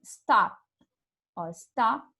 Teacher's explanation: O P fica agarrado aqui, stop. Não sai o P para fora, né? Então, a gente diz na língua inglesa que é um som desvozeado, assim.